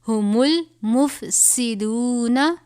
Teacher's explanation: یہ سین ہے، حروف صفریہ میں سے اس کو ادا کرتے وقت آپ کی آواز سیٹی کی طرح نکلنی چاہیے. سین اور صاد میں فرق ہونا چاہیے.